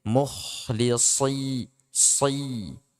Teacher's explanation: Kemudian shod, dia huruf itbaq. Tebal dalam keadaan apapun. Entah itu dia fathah, kasrah ataupun dhommah.